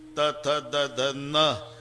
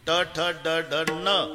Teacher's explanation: नळ्याचा न उच्चारा तर जीभ दाताला स्पर्श करणार, बाणाचा न उच्चारा अजिबात दाताला लागत नाही, टाळूला